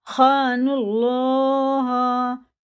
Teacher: اور زیادہ سخت ہوگا۔ خان اللہ، دیکھیے یہ حرف شمسی ہے، دونوں الف، یہ لام اور واو یہ نہیں پڑھے جائیں گے بالکل بھی، نون سیدھا لگے گا اللہ کے نام سے ، اور یہ پیش کے ساتھ ہے تو پور پڑھیں گے۔